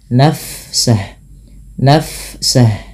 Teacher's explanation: Fa bila sukun dialirkan bunyi nafasnya